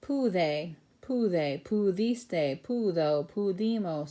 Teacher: that D is surrounded by vowels, so we give it a nice soft sound, not a hard D sound, but we kind of make it like a TH